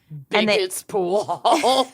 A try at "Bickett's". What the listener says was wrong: Not Bigot, but Bickett.